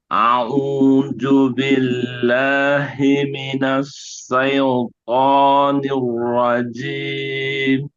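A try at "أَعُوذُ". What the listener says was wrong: Ju-nya masih seperti ju. Seperti a'udzu. Billahi, hak biasa bukan hi, biasa. Billahi. Ini haknya bukan hak kecil, hak besar. Billahi, biasa.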